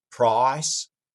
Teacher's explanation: you'll also hear a lot of rounding from many Cajun speakers